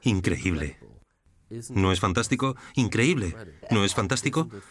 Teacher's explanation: Tu voz sube y baja. Me muestra subiendo y bajando el tono, yendo más rápido y más despacio.